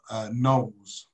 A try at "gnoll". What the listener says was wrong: With a silent G.